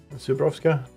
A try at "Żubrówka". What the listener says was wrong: Ż. Ż. You just need to remember it's not z, but ż.